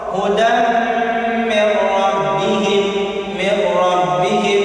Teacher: Hudan mir rabbihim, jadi idgham bila gunnah, dimasukkan atau dihilangkan suara nun, dimasukkan kepada huruf ra bila gunnah dengan tanpa digunnahkan